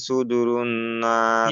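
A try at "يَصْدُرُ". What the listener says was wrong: ইয়াস সুদুরু, সুদূর না, ইয়াস, ইয়া সদ জবর ইয়াস।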